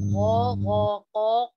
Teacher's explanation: Ghafaqo ko nyaring lepas.